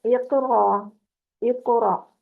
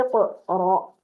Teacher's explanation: زبان کی جڑ لگ رہی ہے ہمارے نرم تالو کو جو گلے کی طرف ہے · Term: قلقلہ